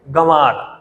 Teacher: दूसरा अक्षर जो है उस पर बलाघात दिया जा रहा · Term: शब्द बलाघात